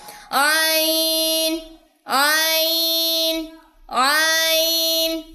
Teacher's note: ایسے گلے میں اس کو دبانا نہیں ہے، یہ وسط حلق سے ادا ہوتا ہے